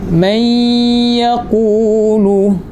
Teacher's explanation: Suara huruf nun tu dah tak ada dah. Suara huruf nun tu dah jadi samar-samar dah. Sebab apa? Sebab suara sebutan huruf nun tu dah dimasukkan ke dalam huruf ya. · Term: idgham ma'al ghunnah